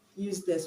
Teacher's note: the stress is gonna be on the first syllable because it's an adjective